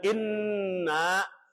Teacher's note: Nun yang tasdid hukumnya dibaca gunah hunna artinya dengung sampai ke hidung